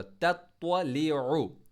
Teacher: त्वा को मोटा हैवी लेटर पढ़ा हमने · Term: इस्तिअला